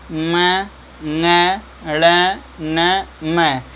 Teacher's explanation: यहाँ देखिए यमंगणना नाम नासिका च, यानी अपने वर्ग के अर्थ, यानी नाक से तो 100% पाँचों निकलेंगे, लेकिन ये पाँचों अपने वर्ग के स्थान वाले जगह से भी उच्चरित होंगे। और का मतलब ये केवल नाक से नहीं, उस जगह से भी उच्चरित होंगे।